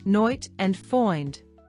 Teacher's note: Long I sound. The long A in words such as night and find sound more like a softer oi sound.